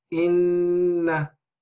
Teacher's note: the nasal sound is emphasized when the noon or the meme has a shadda on it